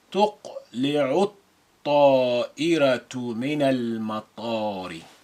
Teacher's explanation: Ta is a sun letter carrying the shadda. Mim is a moon letter, and we retain the sukun on the lam.